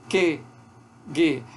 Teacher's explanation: Vai fechar, bloquear a passagem do ar, ou então apenas deixar uma pequena passagem do ar lá na parte de trás do céu da boca, lá no véu palatino. O dorso da língua bloqueando a passagem do ar lá no véu palatino. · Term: oclusiva velar